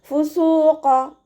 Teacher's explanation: സീനിൻ്റെ കൂടെയുള്ള വാവുമദ്ദിനെ 2 കൗണ്ട് നീട്ടിക്കൊടുക്കുക കേട്ടോ. ഖാഫ് ഇസ്തിഅലാൻ്റെ ലെറ്ററാണ്, ഉയർത്തിയിട്ട് ഉച്ചരിക്കണം. നാവിൻ്റെ ബാക്ക് നന്നായിട്ട് മുകളിലേക്ക് പൊക്കി കൊടുക്കുക കേട്ടോ. ഫുസൂഖ, ഖ ഹെവിയാക്കി കൊടുക്കുക.